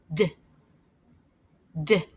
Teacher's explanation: I could feel the front of my tongue tapping up behind my top teeth. D, d. I tapped my tongue again and again because I couldn't stretch it out.